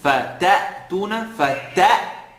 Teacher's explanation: The sound is sharp because of the hamza.